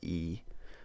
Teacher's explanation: close vowels, like ee, are pronounced higher in the mouth, closer to the roof of the mouth